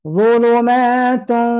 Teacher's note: Tanwin ketemu wau tidak saja ditahan tapi juga pastikan dia masuk rongga hidung. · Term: gunnahnya